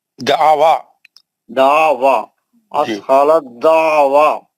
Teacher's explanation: تا ساکن کا دال مشدد میں ادغام میں متجانسین ہو گیا